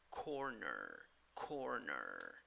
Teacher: In the first syllable, you have an O sound, and in the second syllable, even though you write the word with E, the pronunciation is with schwa